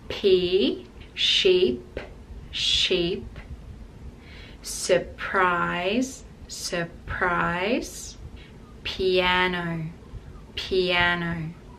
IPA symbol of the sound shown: p